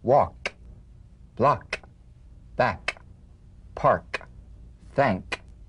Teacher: The unvoiced tongue back plosive consonant. With the tongue in the G position, let the tongue spring away in the soft, unvoiced click of the K drum beat. Feel a crisp tap and a pulsation in the back of the tongue.